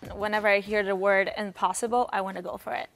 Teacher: want to becomes wanna for is pronounced as fur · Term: connected speech